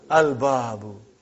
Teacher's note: Moon letter. You did pronounce lam.